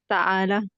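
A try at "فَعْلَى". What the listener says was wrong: نہیں، فعلا، فا کے بعد عین ہے ساکن ہے، فعلا، مرضا،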